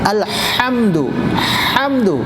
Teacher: بیچ حلق سے عین ہا، عین اور ہا